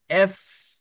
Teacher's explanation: আপনার নিচের দাঁত উপরের ঠোঁটের সাথে বলার সাথে সাথে লেগে যাবে আর বাতাস বের হইতে থাকবে